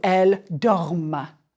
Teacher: The ENT is silent, but it makes you pronounce the final consonant of the stem.